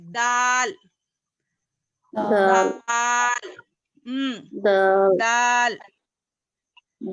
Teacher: زبان کی نوک سامنے کے اوپر والے دو دانتوں کی جڑ سے ادا ہوتا ہے